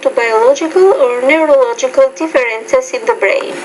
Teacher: you put a little bit more stress and you change your tone on biologic or neurological because that was new information